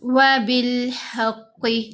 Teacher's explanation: حا کو قاف سے ملائیں گے، قاف موٹا پڑھا جائے گا، حروف مستعلیہ میں سے ہے